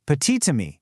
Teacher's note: Well, if petit is followed by a word that starts with a vowel like ammy, that silent t suddenly jumps back to life to link the words. So, it becomes petite to me. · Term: liaison